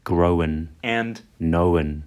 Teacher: past participles like grown and known are sometimes pronounced as growin and knowin with a vowel inserted